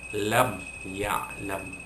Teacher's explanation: tidak ada dengung, kerana bunyi mim mati itu dinyatakan dengan menutup kedua-dua bibir, kan, syafatain, dua bibir, kan, syafawi, kan, lam ya'lam. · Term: izhar syafawi